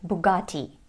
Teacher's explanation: In American English, though, it sounds like Bugatti because of the American flap T, which sounds like a fast D.